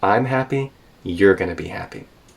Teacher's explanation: gonna be happy kind of with a falling tone I'm your we do this in English when we compare two things we contrast with a rising then a falling tone